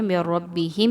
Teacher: نون ساکن کے بعد را آ رہی ہے، من ربہم میں نون ساکن کے بعد را آ جائے تو یہاں پر ادغام وداؤٹ غنہ کریں گے، یعنی کہ میم کو را کے ساتھ ملاتے ہوئے غنہ نہیں کرنا